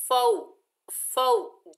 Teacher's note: ये वाव लीन है, नरमी और जल्दी से अदा करेंगे